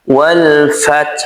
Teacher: Pastikan ha di sini tetap mengalir karena ha ini bersifat rokhawah. Jadi pastikan dia mengalir.